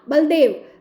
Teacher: ल में अ का लोप हुआ और ल हलंत हो जाता है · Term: मध्य स्वर लोप